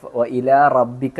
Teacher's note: റോ, വായ നിറച്ച് ഉച്ചരിക്കണം